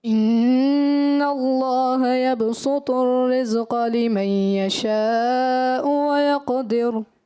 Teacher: یبسط الرزق لمن، یہاں غنہ چھوڑ دیا، مد بھی چھوڑ دی